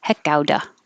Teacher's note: T changes to D and you don't have to say the V on of.